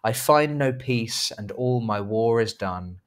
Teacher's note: 10 syllables per line but the emphasis on the second and fourth and sixth and eighth and tenth syllable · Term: iambic pentameter